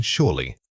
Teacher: When you say surely, your voice needs to drop sharply at the end. This steep falls the listener this is an undeniable fact.